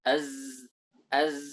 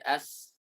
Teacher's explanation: Zai sifatnya adalah aljahr jahr itu tekanannya kuat sedangkan Sin sifatnya hams hams itu lemah tidak ada tekanan sama sekali